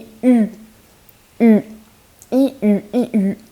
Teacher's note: it is the rounded version of e. So basically when you pronounce E, if you were to pronounce E exactly the same except make your mouth a circle.